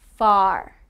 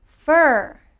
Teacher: the differences in pronunciation between r and r and er now when i say r my mouth is wider however when i say er it is a deeper sound and my mouth is smaller